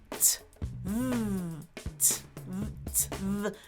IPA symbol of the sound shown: t